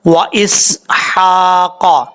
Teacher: واو زبر وا، حمزہ زیر سین اس، حا کھڑا زبر حا، قاف زبر قا، و اسحاق. سین کو سیٹی کے ساتھ پڑھیں گے، ہا بریک ہے، اس کو بریک ساؤنڈ کے ساتھ پڑھنا ہے